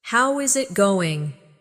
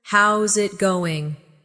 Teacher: A native speaker would say, "Hey, how's it going?" Notice that they don't always say every word slowly and clearly. Instead, how is it going becomes how's it going? The is disappears and the final G in going often softens. This is called connected speech.